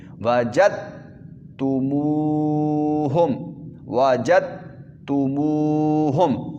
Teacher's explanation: جیم زبر دال جد نہیں پڑھنا بلکہ جیم زبر تا جد پڑھنا ہے، تا کی آواز نکلے، دال کی آواز بالکل ہی نہ نکلے.